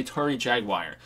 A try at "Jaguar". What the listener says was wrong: Jaguar. There is no like I in Jaguar, right? Jaguar. There's no I in Jaguar.